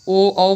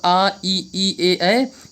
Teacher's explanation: ओ औ बोलने में हमारा होंठ जो हैं वृत्त के आकार के हो जाते हैं, इसलिए इन्हें वृत्तमुखी कहते हैं।